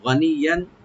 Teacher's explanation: গানিয়ান, গানিয়ান মানে অভাব মুক্ত, গানিয়ান এখানে ইয়াটাকে ডাবল করে আমরা পড়বো, আর এখানে গুণা হবে, একফার সাথে আমরা গুণা করবো। গানিয়ান ইয়ানি যারা অভাব মুক্ত থাকবে।